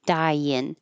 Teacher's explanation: Your tongue goes very high for I. Die. So when you slide down for in, it will make a yin.